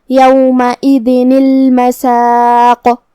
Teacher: ہم تنوین کو جو کہ نون ہے اسے زیر سے پڑھیں گے اور الف کو ظاہر نہیں کریں گے اور اس کے بعد حرف اللام پڑھیں گے